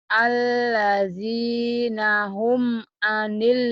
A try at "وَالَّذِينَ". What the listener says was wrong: Walladzi, bukan alladzi. Walladzi.